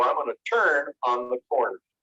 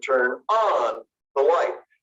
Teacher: in the case of the phrasal verbs it's not the turn word or the verb that gets emphasized it's this little particle